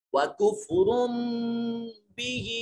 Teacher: وَكُفْرٌ بِهِ ہا کے نیچے یا المدیہ صغیرہ ہے، اس کو تھوڑا سا لمبا کریں گے